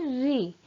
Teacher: इसका उच्चारण करते समय प्राणवायु मूर्धा को स्पर्श करती हुई निकलती है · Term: मूर्धन्य स्वर